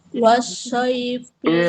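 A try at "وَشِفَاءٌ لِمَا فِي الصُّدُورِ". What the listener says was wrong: Masih ada Bun. Wash, masih ada. Jangan menyembur ya Bun. Jangan disembur. Jangan wash.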